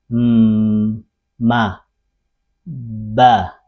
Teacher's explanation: Mirip, jadi mim dan ba itu sama tempat keluarnya di bibir. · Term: ikhfa syafawi